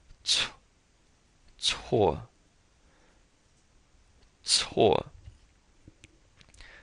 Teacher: This C, when it's an initial, when it's in the beginning, kind of sounds like the TS in cats